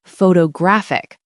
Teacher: Now the stress is on the third syllable. So the first O has a secondary stress, but that middle O turns back into awah.